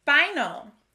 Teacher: final has the schwa sound at the end of the word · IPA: /ə/